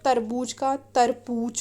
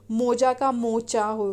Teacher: मैथिली में जा के स्थान पर चा का प्रयोग होता है।